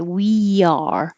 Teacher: going up high for we and sliding down for the Y.